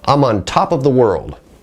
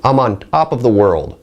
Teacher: when I use the unaspirated T sound, it sounds a little weirder. It sounds like maybe a non-native pronunciation of the word.